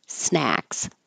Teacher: it has the a so open keep your jaw very open and your lips back